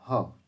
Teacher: ह जो है कंठ ध्वनि है।